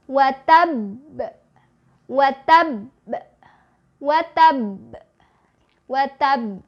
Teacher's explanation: tahan dulu tasdidnya baru keluarin bunyi pantulannya · Jadi kalau kita berhenti tahan dulu, watab, watab, watab, watab, gitu, seperti itu. Jadi ditahan dulu baru keluarin bunyi pantulannya setengah dari vokal harokatnya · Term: qalqalah